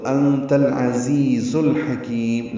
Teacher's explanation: حکیم میں حا وسط حلق سے ادا کریں گے. کی یا مدہ ہے اور اس کے بعد میم ساکن کرنے کی وجہ سے الحکیم لمبا کر دیں گے. · تا کو العزیز کے لام سے ملا دیں گے، لام ساکن پہ اظہار ہے، عین کی وجہ سے عین وسط حلق سے ادا ہوگا. زا دونوں تیز صفیر کی آواز سے ادا کریں گے، حروف صفیریہ میں سے ہیں زا.